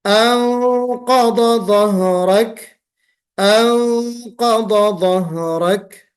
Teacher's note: हम मुंह भर के इख्फा कर रहे हैं